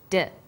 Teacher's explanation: When you articulate d, you can feel your tongue against your tooth ridge